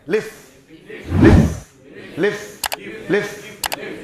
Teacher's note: ऊपर के दांत नीचे होंठ से मिलाना